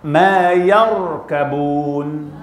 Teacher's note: Jangan sebut yar, ra mesti tebal. Ya nipis, ya nipis, ra tebal.